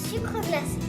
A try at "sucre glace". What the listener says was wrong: Et sucre glace. Glace, pas glacé, du sucre glace.